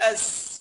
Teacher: اول ما تلاقي العلامه دي ما ادغمها على طول، قلت اس خلاص من الهمزه للسين مباشره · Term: ادغام لام الال